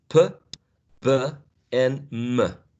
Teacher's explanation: these sounds, the bilabials, are articulated by bringing both lips together